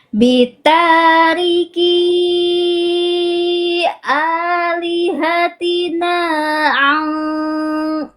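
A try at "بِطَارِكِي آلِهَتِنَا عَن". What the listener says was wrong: ainnya Ya kurang naik berarti ainnya tipis baru tebalkan di ikhfanya.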